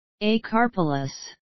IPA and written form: eɪ'kɑ:pələs (acarpelous)